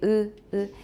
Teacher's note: It does not have spread lips like e, but lips that are fairly close together, compressed vertically, 就是上下, 它是有点被压缩, with the corners neither drawn back as in a spread vowel, nor pulled together as in a rounded vowel. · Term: high unrounded vowel